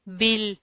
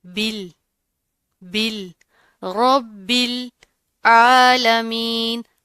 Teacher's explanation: با کے اوپر تشدید آ رہی ہے، سختی سے پڑھیں گے، اور اس با کو ہم اس جوڑوں کے لام کے ساتھ ملائیں گے